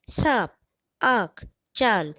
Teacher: इनका उच्चारण जब हम करते हैं तो फेफड़ों से आने वाली वायु नाक और मुंह दोनों से बाहर निकलती है। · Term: अनुनासिक